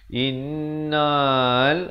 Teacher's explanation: Dengungkan 2 harakat, wajibul gunnah. Innal, terus naik di atas lam.